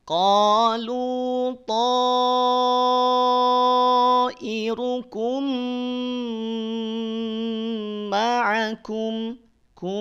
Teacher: mim sukun bertemu mim idgham mimi. Ini juga sabar. Tahan 2 harokat sambil kita dengungkan.